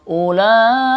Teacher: Karena ini namanya mad wajib muttasil, wajib dibaca panjang ya.